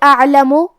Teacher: حرف العین کی ادائیگی حلق کے درمیان والی حصے سے ہے اور کیونکہ اس پہ جزم ہے لہذا ہمیں عین کو ظاہر کرنا ہے.